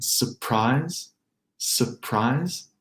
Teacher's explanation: Let's call it a dropped R in surprise